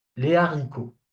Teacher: So the H is kind of pronounced, kind of, okay? So that's why the liaison doesn't apply here. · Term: aspirated